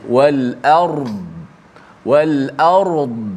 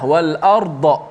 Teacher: huruf dad ni dia ada rakhawah, suara tu terkeluar sedikit